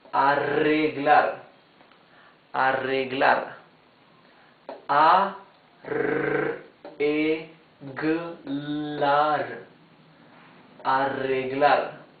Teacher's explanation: when the R is doubled in the middle of a word, it's the same rough sound as the R at the beginning of the word.